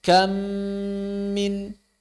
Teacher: ditahan 2 harokat ghunnah · mim yang pertama hilang, suaranya hilang 100%, mim yang kedua bertasydid. Kita baca seperti membaca mim bertasydid. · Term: idgham kamil